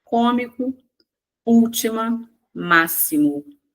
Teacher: As três apresentam como sílaba pronunciada com mais intensidade a antepenúltima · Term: palavras proparoxítonas